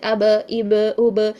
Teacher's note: چاہے ماقبل حرکت کچھ بھی ہو لیکن فتحہ کی حالت میں ہی ادا ہو رہا ہے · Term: قلقلہ